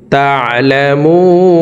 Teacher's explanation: মু এখানে 3 আলিফ টেনে নুনকে সাকিন করে ফেলবো, কারণ মদের হরফের বামের হরফে ওয়াকফ হইলে মধ্যে আরজি 3 আলিফ টানিয়া পড়িতে হয়।